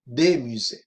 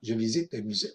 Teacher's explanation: Para saber que estamos hablando del plural, porque musée Sí, aunque lleve la S, al oído no suena y para saber que estoy hablando en plural diría des musées.